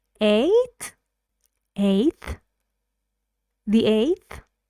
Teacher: is one syllable the vowel in it is a so we our voices should go up on the vowel a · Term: Rising intonation, rising